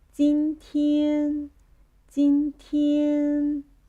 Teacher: The next word, jīntiān. Jīntiān, which is the first tone, high tone. Yeah, high high pitch, the highest pitch.